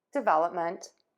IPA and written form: dɪˈvɛləpmənt (DEVELOPMENT)